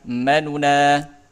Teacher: mimnya tetap satu harokat, naknya dua harokat, nunya setengah atau sepertiga harokat